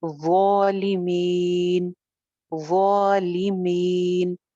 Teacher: ظو جو ہے یہ موٹا حرف ہے، سا زال ظو، اوپر والے 2 دانتوں کی کنارے سے یہ نکلے گا، زبان کی نوک اوپر والے 2 دانتوں کے کنارے پہ لگائیں، کیونکہ ظو موٹی بھی ہے اور ظو کی آواز بھری ہوئی بھی ہوتی ہے، لہذا زبان جو ہے درمیان سے بھی اٹھ جائے گی، پیچھے سے بھی اٹھے گی